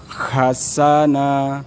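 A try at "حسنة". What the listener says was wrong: Bukan kha, tapi ha. Agak dalam. Dia kayak ya kalau kita kausan terus kasih s dulu. Hasana.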